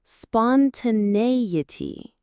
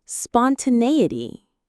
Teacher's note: Spon, ta, ne, e, t. The main stress is on the 3rd syllable